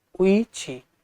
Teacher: ई ई उ उ संवृत यानी बंद, ये चारों ध्वनियां ई उ संवृत स्वर होते हैं।